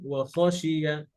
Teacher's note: আর খতেও হামস হবে, ঠিক আছে? বাতাস জারি থাকবে।